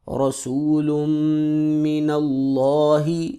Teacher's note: لفظ اللہ موٹا ہوگا کیونکہ اس سے پہلے زبر ہے